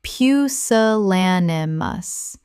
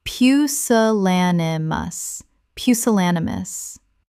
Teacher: Five syllables with the stress on the third